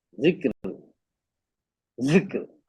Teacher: जाल का लहजा हल्की सी हवा के साथ और जुबान का हल्का टच रखते हुए अदा करना है